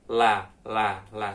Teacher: ujung-ujung lidah kita nih yang naik kemudian ujung ini ketemu dengan langit-langit teman-teman jadi nah lidah ini langit-langit kemudian ini ujung lidahnya seperti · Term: huruf lam